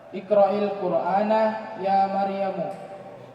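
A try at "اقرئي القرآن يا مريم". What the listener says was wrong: Ya, tulisannya iqra'i. Panjang Iqra'i Al-Qur'ana ya Maryam. Ya, ada ya muannatsatil mukhatabah. Iqra'i Al-Qur'ana ya Maryam.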